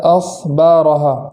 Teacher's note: اخبارہا کے حمزہ میں خوب جھٹکا کریں گے ، اس طریقے سے، اور خا کو اس طریقے سے پڑھیں